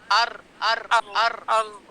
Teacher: آپ اپنی زبان کی نوک پورے اوپر ٹچ کریں تالوں میں آگے والے جو دو دانت ہیں نا اس کی بالکل بیک سائڈ پہ اوپر لگائیں